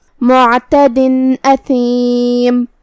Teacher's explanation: اظہار کا معنی ہے ظاہر کرنا، تو ہم یہاں تنوین ظاہر کریں گے اور اسے نون ساکن پڑھیں گے اور بغیر غنہ سے یہ حکم کو ادا کریں گے